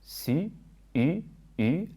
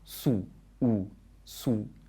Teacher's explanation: has an u vowel with the tongue forward in the mouth, and the second word, su, u, su, has the tongue further back in the mouth. Check you don't say it like the English word sue.